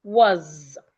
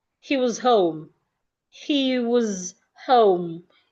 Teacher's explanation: The S in was sounds as Z. Was. The weak form becomes was.